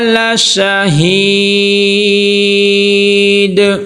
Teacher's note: آگے ہید، یا مدہ ہے، اور پھر یہاں پہ دیکھیں دا حرف قلقلہ میں سے ہے، جب ہم وقف کریں گے تو دال کے اوپر کیا آ جائے گی؟ جزم آ جائے گی، دال ساکن ہو جائے گا، تو یہاں پہ ہم کیا کریں گے؟ قلقلہ کریں گے جی